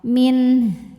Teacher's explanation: Di sini ada hukum idhar halqi, karena nun sukun menghadapi huruf halqi atau huruf tenggorokan yaitu ha, maka nun dibaca jelas min dan ha harus tetap terbaca ya, dorong sampai tenggorokan bawah.